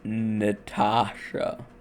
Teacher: The final vowel being after the stress produces the sound as a schwa. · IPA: ə